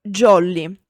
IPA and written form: ˈʤɔlli (jolly)